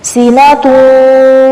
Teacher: اوپر دو پیش ہے اور آگے واو آ رہا ہے، تو ہونٹوں کو گول کرتے ہوئے سینہ توں پڑھیں گے